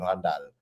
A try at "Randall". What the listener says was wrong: you got to roll the R. Randall.